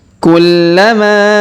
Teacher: Perhatikan huruf la berharokat tasdid, maka kita tahan dan kita tekan. Kemudian huruf ma kita panjangkan 5 harokat karena di atasnya terdapat tanda garis bacaan panjang 5 harokat.